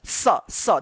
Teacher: दोनों दांत के बीच में जीभ आता है, तब निकलता है स। देखिए ये दोनों दांत के बीच में जीभ आएगा स। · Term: दंत स